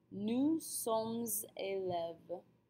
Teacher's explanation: élève begins with a vowel, so we'll form a liaison between sommes and élèves